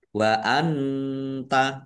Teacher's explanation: nun sukun bertemu dengan huruf ta. Bacaan ikhfa dibaca samar-samar